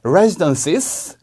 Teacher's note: residence에서 끝나는 게 아니고 언니, 누나 할 때 그 sister처럼 sis, S 발음을 꼭 2번 해주셔야 돼요. residences, 근데 콤마가 있으니까 sis라고 올려주셔야 되는 것까지 챙겨주셔야 합니다.